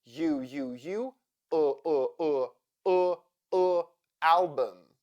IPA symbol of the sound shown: ə